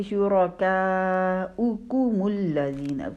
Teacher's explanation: رولنگ ہے، یعنی 2 دفعہ اپنے ہونٹوں کو گول کرنا ہے۔ کاف کی پیش کے لیے تو پہلے ہونٹ گول تھے، پھر میم کی پیش کے لیے دوبارہ ہونٹ گول ہوں گے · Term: ٹو رولنگ